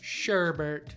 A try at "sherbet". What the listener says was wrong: Wait, is it really sherbet? There's no extra R in there?